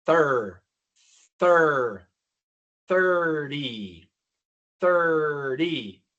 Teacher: La única diferencia es que al principio, en lugar de pronunciar una d colocando la punta de la lengua en la sencillas de arriba, vamos a colocar la punta de la lengua debajo de los dientes de arriba, porque tenemos aquí th